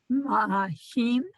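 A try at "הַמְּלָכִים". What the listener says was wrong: Okay, so it's not ma, it's just the m sound. There's no ah under it. You have to hear the guttural. Not ma, ham.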